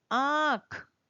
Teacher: स्वर का उच्चारण करते समय यदि हम नासिका की भी सहायता ले तो उन स्वरों को कहते हैं अनुनासिक स्वर